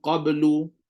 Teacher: bunyi qaf pula lidah terangkat belakang